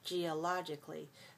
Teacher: you don't have to pronounce the a in geologically you can just make it sound like k-l-y cli